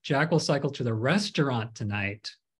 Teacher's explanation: you're emphasizing restaurant he's not going to school he's not going to the Opera he's going to the restaurant